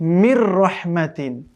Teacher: সেগুলো এই যে মনে করুন এখানে নুন সাকিনের পরে র এসছে, তানবিনের পরে লাম এসছে, তার মানে নুন সাকিন তানবিনের পরে যদি আমরা বলেছিলাম এই যে র লাম আছে, এই র লামে যদি কোনো একটি আসে তাহলে ইদগাম করে পড়তে হবে কিন্তু গুন্না ছাড়া